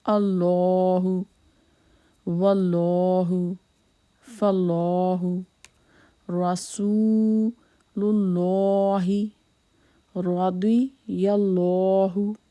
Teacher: So before Allah's name, Zabar or Pesh comes, then it will be, this Lam will be in a thick tone voice.